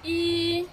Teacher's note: first tone which is flat